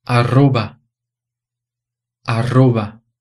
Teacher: E eu coloquei esse R duplo aí em vermelho, não foi à toa, não. Ele tem aquele som vibrante múltiplo que eu mostrei antes.